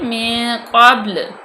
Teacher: اب دیکھیں نون ساکن کے بعد کاف آ گیا تو یہ فا میں سے ہے کاف، تو یہاں پہ فا کا بھی قانون لگ رہا ہے، کاف مستعلیہ بھی ہے، اور با جو ہے وہ کلکلا بھی ہو رہا ہے اس پہ، کیونکہ با ساکن سے پہلے زبر آ گیا تو یہاں پہ کلکلا ہوگا، یہاں پہ ہم وقف بھی لازمی کریں گے کیونکہ یہ وقف مطلق کی علامت ہے۔